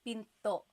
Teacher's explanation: Do you hear the glottal stop when I say pinto? Pinto. So it's not pinto.